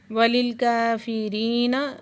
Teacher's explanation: کاف کو باریک آواز سے پڑھیں گے